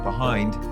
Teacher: you accent the second syllable a little bit more than Americans do